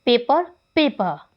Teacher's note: जो र साउंड है लास्ट में उसको इग्नोर किया जाता है